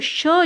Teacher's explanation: अब देखिए इनके अगर हम उच्चारण की बात करें तो श जो है इसका होता है तालु से, यानी तालव्य से।